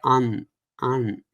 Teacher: And Anuswara is essentially pronounced as the definition of that is a post-vocalic nasalization, which means you say the consonant, you say the vowel, and then you have a nasal, release